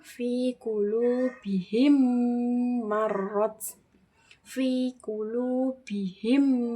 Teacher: Nah, idgham mimi ini mim sukun bertemu dengan huruf mim. Cara bacanya memasukkan huruf mim pertama ke mim kedua atau tasdid disertai dengung atau gunah yang ditahan.